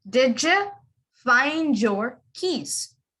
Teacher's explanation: the d and the y make the j sound